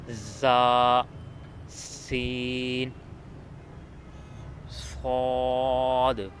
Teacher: زبان کی نوک نیچے کے دانتوں پر لگے تو ادا ہوتے ہیں زا، سین، صاد۔